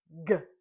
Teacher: Your tongue is on the top or roof of your mouth towards the very back. And when it drops down, it kicks out or pushes the sound G.